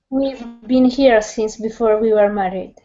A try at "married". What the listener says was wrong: Now watch the R. Watch the R on married instead of married. Married.